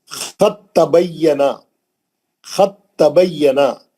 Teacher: اس مثال میں دال ساکن کی آواز تا ساکن سے بدل گئی اور پھر تا ساکن تا مشدد متحرک میں داخل ہو گئی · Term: ادغام متجانسین